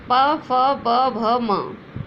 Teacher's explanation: ये ओष्ठ जाति से हैं और इनको प वर्ग में रखा गया है